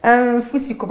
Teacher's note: نون ساكنه بعدها فاء الاخفاء مع ابراز الغنه